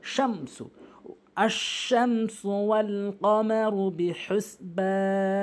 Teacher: এই মিম সাকিনকে কখনোই গুণনা করতে পারবেন না, স্পষ্ট করে উচ্চারণ করতে হবে।